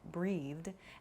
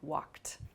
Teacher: An id sound, started, a soft D sound like breathed, and then a more hard T sound like walked. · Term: past tense verb sounds